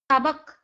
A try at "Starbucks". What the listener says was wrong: Be careful a little bit with your S, huh?